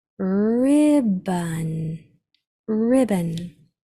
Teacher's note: This O follows that schwa rule where if it comes almost to the end and there's a consonant at the end, the O is going to change and say So the sounds are I, B, N.